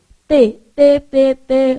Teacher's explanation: eu falei teste Olha o que que acontece o teste ele a sua língua no t ela fica no meio do dente